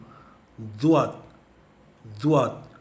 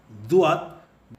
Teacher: इसमें ये विचित्रता है कि जब हम ज़ुआत कहते हैं, हम कहते हैं ZUAAD, मगर आपको सुनाई देता है DUAAD